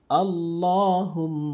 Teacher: এবং হুম ওয়াজিব গুণনা করবেন নাকের ভিতরে নিবেন